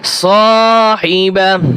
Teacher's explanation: অক্ফ করলে এই যে গোলতা রয়েছে এটা হা উচ্চারণ হবে